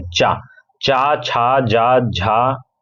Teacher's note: अगर हम यहां पे चा वर्ग की बात करें, चा, चा, छा, जा, झा, इनके उच्चारण स्थान तालु से होते हैं